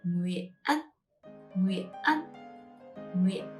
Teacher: And the tone, this curvy tone is called high rising broken tone. And to pronounce it, you go high, you stop, and then you go higher at the end.